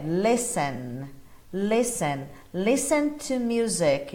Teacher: Cuidado com esse T, ele não é pronunciado, tá bom? A pronúncia dele é listen, listen, listen to music, não listen, como a grande maioria acaba falando, né?